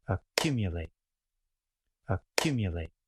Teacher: we often put the main or primary stress after the beginning vowel sound. We have secondary stress toward the end of the word. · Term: main stress